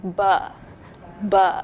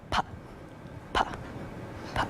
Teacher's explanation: b or b might sound a little bit longer than p